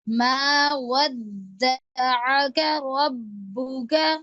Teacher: ربک پہ دیر لگائے, با پہ تشدید ہے, ودک میں بھی دال پہ تشدید ہے.